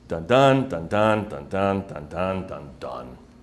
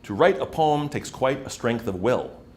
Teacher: each line has 10 syllables, and you stress all the uneven numbered syllables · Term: iambic pentameter